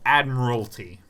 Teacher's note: You really collapse on that third syllable. Admiralty. You don't say admiralty.